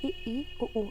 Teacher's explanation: हमारा मुंह सकरा यानी बहुत कम खुलता है, तो ई उ ऊ आप खुद उच्चारण करके देखिए, बहुत कम खुल रहा है, तो समृद्ध स्वर।